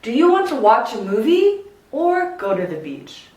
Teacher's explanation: choice questions will go up and then down